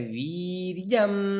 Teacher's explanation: वी दीर्घ है, नीचे है और दीर्घ है। वी है, वी वी नहीं, वी।